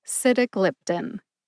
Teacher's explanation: Emphasize sit and glip. Glip gets the most emphasis.